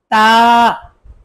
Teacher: তা উচ্চারণ জিহ্বার আগা থেকে পাতলা করে আদায় করতে হবে।